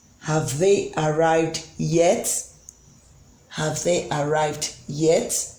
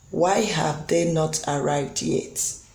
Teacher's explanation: have they arrived yet it goes up why have they not arrived yet it falls at the end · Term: rising ination